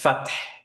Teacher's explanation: ফাত যদি পড়ি তাহলে আমার হা আসে নাই, ফাত এইভাবে বলতে হবে, রাইট?